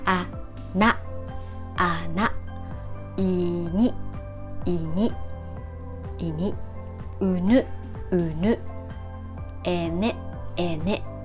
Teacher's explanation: you press your tongue right behind your front teeth, wider and longer than the English sound.